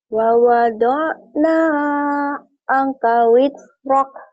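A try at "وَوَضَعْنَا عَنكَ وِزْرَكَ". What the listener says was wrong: Jangan buru-buru. Wa wada'na anka wizrak. Ditahan. Anka wizrak.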